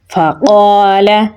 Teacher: آگے الف مدہ ہے تو لمبا پڑھیں گے